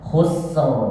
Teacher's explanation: Nah, khusr gini, ini namanya takrir yang banyak. Karena ro itu ketika tebal, ulama qurra sepakat bahwasanya ro itu takrirnya cuma sekali aja. Khusr. Jadi kalau ini lidah nggak nempel sama langit-langit, tapi kalau dibiarkan nempel terus maka akan bergetar terus. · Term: ro tebal